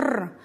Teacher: Произносим звук «Р», звук согласный, звонкий, твердый.